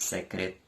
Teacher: E quando pronuncio a palavra secretaria, observe que na palavra secretaria, a sílaba tá não é forte, e sim a sílaba ri